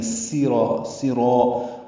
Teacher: زبان کی نوک سامنے کے دانتوں کے اندرونی کناروں سے لگائیں گے. سراع میں سین حروف صفیریہ میں سے ہے، اس میں صفیر کی آواز پیدا ہوگی. زبان اوپر اور نیچے والے دانتوں کے بیچ میں آتی ہے، ٹکراتی نہیں ہے.